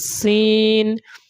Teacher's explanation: छोटी सीन में सीटी की आवाज होगी · چھوٹی سین میں سیٹی کی آواز ہوگی